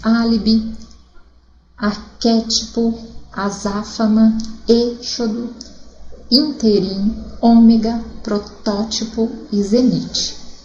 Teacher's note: Todas proparoxítonas, a sílaba mais forte, a terceira contando da direita para a esquerda